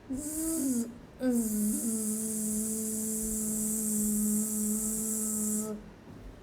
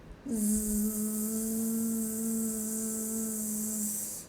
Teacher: When we say zzz, we can feel some kind of buzz. That buzz effect comes from the vibration of the vocal cords. So, the sound z is a voiced sound.